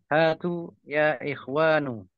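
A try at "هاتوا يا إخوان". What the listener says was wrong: Nam hatu ya Ikhwan. Bagus.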